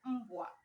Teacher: M, we write single M, but in pronouncing, you can hear two M. The first M that is standing alone, and another M that goes with B, W, and A.